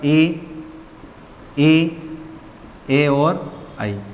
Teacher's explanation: इनका कभी भी उच्चारण करेंगे तो हमारी जिह्वा का जो आगे वाला भाग है वो काम में ज़्यादा आता है